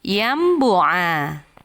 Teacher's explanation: menukar bunyi nun mati dengan mim ketika bertemu dengan huruf ba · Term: iqlab